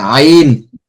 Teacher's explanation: আইনটা হচ্ছে হলকের মধ্যখান থেকে আইন। আচ্ছা, আইন, জি, আইন যেমন হামজা দুই জের ইন, আইন দুই জের আইন।